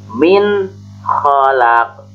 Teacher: Jadi nunnya dijelas, jelas membacanya, jangan samar atau mendengung. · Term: idhar